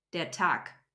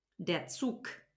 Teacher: if there's a G at the end of a syllable or a word, it turns into a K.